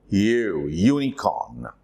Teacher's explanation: It is with a letter, that is U. But what it sounds is long sound with Y-U or Y-O-O